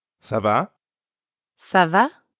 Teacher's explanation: make sure your voice rises a little at the end so it sounds like a question